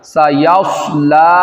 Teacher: یہاں پہ سواد پر سیٹی نکلے گی اور اس کو موٹا بھی کرنا ہے